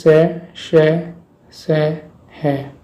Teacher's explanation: ये सभी ऊष्म व्यंजन महाप्राण होते हैं और तीनों स होते हैं अघोष और है होता है सघोष।